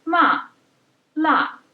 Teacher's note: the fourth stone starts high and then drops sharply to the lowest point to the lowest pitch